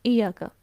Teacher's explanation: ایاکا یا لمبا کرنا تھا، ہم نے کیا پڑھ دیا جلدی میں، ایاکا، اس کی مد کو سکپ کر دیا